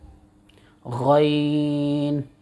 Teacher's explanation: آخر حلق سے، آخر حلق سے غین ادا ہوتا ہے